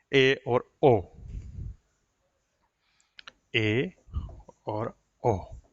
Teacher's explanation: इन स्वरों का उच्चारण करते समय मुंह संवरित से अधिक लेकिन अर्धविवरित से थोड़ा कम खुलता है।